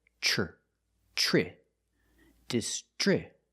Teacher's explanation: Then we have the tr together. The tr makes the chch- sound like chicken plus the r sound together.